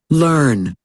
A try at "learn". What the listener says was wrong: লার্ন। ঠিক আছে, বলার পরে রটা চলে আসছে, মানে লার্ন না, লার্ন না, লার্ন, লার্ন, লার্ন।